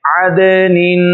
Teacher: دال حروف قلقلہ میں سے ہے، اس لیے اس کو بھی ظاہر کر کے پڑھ رہے ہیں۔